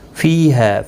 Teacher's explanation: فی یا مدہ ہے، ہا الف مدہ ہے، دونوں کو ایک ایک الف کی مقدار کے برابر کھینچ کر پڑھیں گے